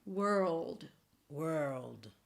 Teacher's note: the word world is a wr and then just think of tripling the L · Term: dark L